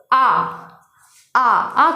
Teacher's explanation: जब हम आ का उच्चारण करते हैं तो हमारा मुख जो है वो स्वतंत्र रूप से खुल जाता है। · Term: विवृत स्वर